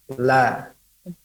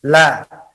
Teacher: lam itu tidak keluar daripada hidung. Dan dia keluar daripada lidah menempel kepada gusi. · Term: huruf lam